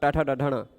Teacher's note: ट वर्ग र श इन सब का उच्चारण स्थान है मूर्धा